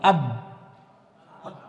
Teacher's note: Ba sukun di makhraj huruf ba. Ba itu dia bibir atas bawah nempel. Berarti diam di makhraj huruf ba.